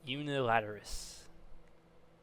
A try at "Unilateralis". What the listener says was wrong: Unilateralis. It's like Alice at the end. Yeah, you need that A, but otherwise you are close.